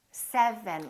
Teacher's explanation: first my lower lip is touching my upper teeth mm-hmm and then my tongue is touching right behind my upper teeth